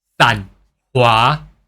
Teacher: this san is actually pronounced as sun, but with lower pitches